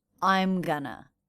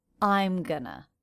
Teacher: Notice how I'm is the most stressed syllable in that fragment. I'm gonna. That's because going is a helping verb here, not the main verb.